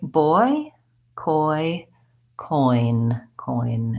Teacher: go from the O the rounded shape to the e shape you're just closing boy boy and reducing going from a tense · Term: diphthong